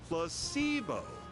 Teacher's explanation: the stress is on the middle syllable